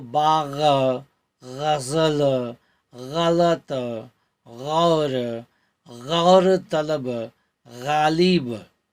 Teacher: ग के नीचे नुक्ता लगता है तो होता है ग। ये भी कंठी ध्वनियां हैं और इसमें भी वायु घर्षित होकर बाहर निकलती हैं।